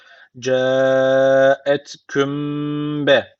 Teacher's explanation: burada dudak ihfası var Ne yapacağız bir Elif dudaktan tutuyoruz